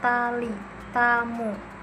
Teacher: ujung lidah menyentuh alveolar ridge, tulang di belakang gigi atas. Bunyinya itu T.